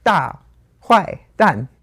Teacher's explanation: That's three times the fourth tone.